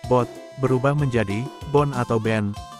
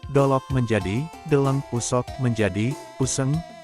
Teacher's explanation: fonem penutup D mengalami perubahan menjadi N dan G menjadi eng dan ang, di mana kata bot berubah menjadi bon atau ben, saut menjadi sahun, toot menjadi tiwen, sogot menjadi cegen, sarat menjadi saran, dan alut menjadi alun.